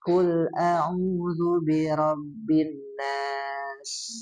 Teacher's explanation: huruf sin ini punya sifat sofir. Nah, sofir itu suara tambahan ya, desisan.